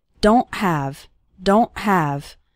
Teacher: don't really pronounce the T strongly so don't say don't okay it's more of a stop at the back of your throat the sound cuts off very suddenly